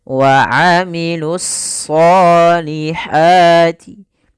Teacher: pada lafal shad itu kita tebalkan wa amilus sholihati, ya, ditebalkan huruf shadnya.